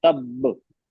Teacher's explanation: लेकिन यहाँ पे दो हैं, तो पहले वाला जो बा है ना, उसको हम थोड़ा रोकना है, उसको मतलब मुंह बंद कर देना हो, तब। बा में मतलब मखरज क्या, दोनों होंठ आपस में बंद होते हैं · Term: कलकला